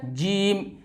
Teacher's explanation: फिर ये दोस्तों है जीम, और इसका मखरज है बीच जुबान और इसके जस्ट मुकाबिल ऊपर का तालु